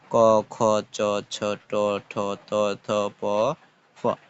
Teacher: ধ্বনি উচ্চারণের সময় ধ্বনি কম কাঁপবে সেগুলোকে অঘোষ ধ্বনি বলে অন্যভাবে স্বরপল্লবে কাঁপন না লেগে যে ধ্বনি উচ্চারিত হয় সেটিকে বলা হয় অঘোষ ধ্বনি